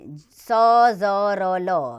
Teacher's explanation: वत्सर्य यानी कि दांतों की जड़ से स ज र ल ये व्यंजन आते हैं